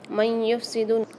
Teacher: من یفسد، نون ساکن کے بعد جو یہاں پر قاعدہ ہو رہا ہے وہ ہے ادغام مع الغنہ کا، یا نون میم واو میں سے یا مشدد آ رہی ہے تو یہاں پر ہم غنے کے ساتھ ادغام کر کے پڑھیں گے